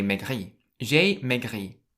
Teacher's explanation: you stress the last syllable rather than the first syllable